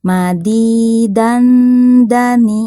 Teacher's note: karena makhrajnya berdekatan dengan huruf Dal maka saat didengungkan itu nampak sekali Nun sukunnya · dibacanya samar ditahan sebentar sambil didengungkan dan siap-siap mau melafalkan huruf Dal nah nun sukun di di tangwin Fatah ini karena makhrajnya berdekatan